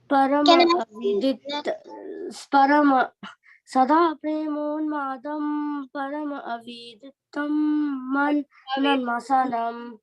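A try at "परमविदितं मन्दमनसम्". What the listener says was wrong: So this you don't have to say it separately. Paramaviditam mandamanasam. So don't say this separately, specifically. Like Paramaviditam. You can join it. So you don't think that there is a space here.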